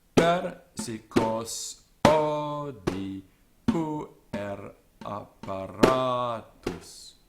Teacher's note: the pattern is one of stresses on the first, fourth, sixth, and 10th syllables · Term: natural stress accent